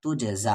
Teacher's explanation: یہاں پر قلقلہ ہوگا کیونکہ جیم ساکن ہے